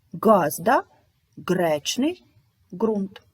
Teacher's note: звук Ґ утворюється за допомогою задньої частини язика